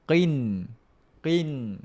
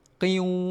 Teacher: Tapi kita tak baca dengan idgham alghunah. Kita baca dengan izhar, kita baca dengan jelas. Kita sentuh makhraj huruf nun. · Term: izhar mutlak